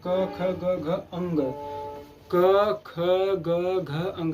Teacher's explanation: जब भी देखेंगे तो प्रेशर कहाँ पड़ रहा है? इसका दबाव कहाँ पड़ रहा है? गले पर, अर्थात कंठ पर। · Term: कंठ वर्ग